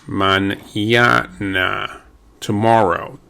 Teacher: Now, if you have the N with a little squiggly line above it called an accent, or the accent above that N, the N is pronounced as if it were an N-Y, N-Y. It's actually literally called an N-Y.